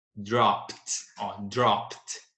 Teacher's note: a sua forma do passado com o ED, com o som de T, som voiceless.